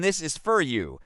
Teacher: the schwa sound, which is a soft unstressed sound